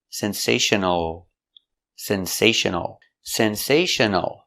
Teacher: The L is a dark L back here.